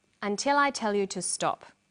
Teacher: Did you hear the falling tone at the end?